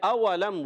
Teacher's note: واو کی ادائیگی ہونٹوں کی گولائی سے. اولم یروا میم سائن کے قاعدوں میں سے ایک قاعدہ اظہار شفوی کا قاعدہ.